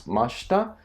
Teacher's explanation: with the masu form in the past tense, Mashita, the shita goes down. It happens here as well.